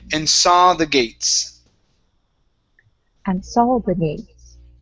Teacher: Instead of saw ending with an oo sound, we're only going to end with an ah.